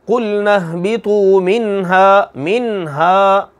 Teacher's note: نون ساکن کے بعد ہا آ گئی ہے، ہا ان حروف میں سے، حروف حلقیہ میں سے، کہ جب یہ نون ساکن کے بعد آئے تو غنہ نہیں ہوتا